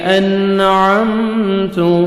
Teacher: نون ساکن کے بعد حروف حلقی میں سے عین آ رہا ہے، یہاں پہ آپ نے اظہار کرنا ہے